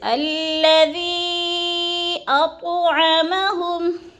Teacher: حروف مدہ کے بعد حمزہ دوسرے کلمے میں آ گیا ہے تو ادھر مد متصل ہے، 4 الفی مد ہے، 4 الف کے برابر ہم نے اس کو کھینچ کر پڑھنا ہے. جیسے الذی اطعمہم، اط کی تو پہ قلقلہ کریں گے اور ہم پہ کیا ہے ادغام مع الغنہ، میم ساکن کے بعد میم مشدد آ گیا ہے تو ادھر ہم نے ادغام کرنا ہے، سختی سے جماع کے ساتھ پڑھنا ہے.